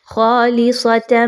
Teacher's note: آپ نے یہاں پہ ایسا ادغام کرنا ہے کہ جس میں غنہ شامل ہوگا۔ خالصۃ، تم آواز کو ناک میں لے کے جائیے۔